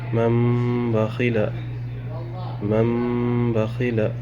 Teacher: یہاں دیکھ سکتے ہیں نون ساکن ہے، پھر با آ رہا ہے۔ اب نون ساکن کو میم میں بدل کے غنہ اور اکفا کے ساتھ پڑھیں گے